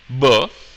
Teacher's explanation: Whereas when I say b, my vocal folds are vibrating, so there is some signal that is being captured. So that's the difference between voiced stops and unvoiced stops. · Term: Voice stops